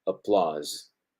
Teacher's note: Applause, buen contraste aquí entre estas dos, recuerden, un sonido bien breve, seguido por un sonido prolongado, applause, applause. Recuerden que comienza como una O, se va extendiendo y relajando al mismo tiempo